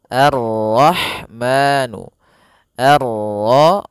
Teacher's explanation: Quran pada bacaan Arrahman di sini ada alif lam syamsiah yaitu alif lam yang ditulis tapi ia tidak dibaca sehingga kita langsung masuk ke huruf ro